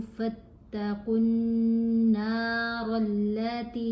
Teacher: वलन तफ़अलू फत्तक़ुन नारल्लती, क़ाफ को नून से मिलाते हुए हमने गुन्ना करना है। गुन्ना एक हरकत के बराबर ठहर कर आवाज़ नाक में ले जाकर पढ़ी जाती है